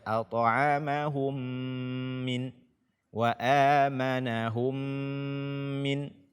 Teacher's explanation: idgham mimi dan dia berdengung, kita tahan selama 2 harakat